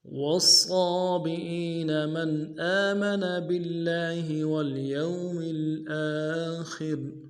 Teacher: والصابئين من آمن بالله واليوم الآخر والصابئين من آمن بالله واليوم الآخر والصابئين میں واو کو صاد کے ساتھ ملانا ہے، صاد موٹا حرف ہے، صاد موٹا کرنا ہے، اور صاد کے اوپر کھڑا زبر ہے، ایک دان میں کھینچیں گے